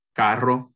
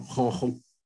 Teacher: Esto está muy generalizado en Puerto Rico, es decir, la R se convierte en la ja, velar.